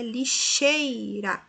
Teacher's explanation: lixeira veja que é a penúltima que é mais forte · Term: paroxítona